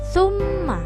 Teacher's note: cara membacanya yaitu dibaca dengung dua ketukan atau sama dengan satu Alif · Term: bacaan ghunnah